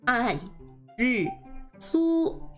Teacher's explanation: which is basically 2 fourth tones and then the flat first tone for the su. So this su would have the first tone.